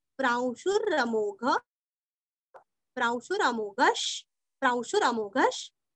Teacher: वो र पूरा नहीं पढ़ना है, हल्का सा पढ़ना है